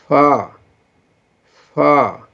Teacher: اوپر کے دانتوں کے کنارے اور نیچے کے ہونٹ کی تری والے حصے سے یہ فا